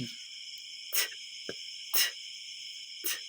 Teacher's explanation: Una, pasara or stop. Harang na harang ang daanan ng hangin.